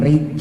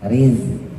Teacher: itu banyak banget itu ya Jangan jadi gy kan beda jauh kalau gim mah ujung lidahnya di atas di langit-langit yang keras sedangkan Zai ujung lidahnya di bawah antara gusi bawah sama gigi bawah